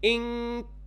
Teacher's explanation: There was no gap in my mouth between my tongue and the upper palate. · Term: weakest level of ikhfa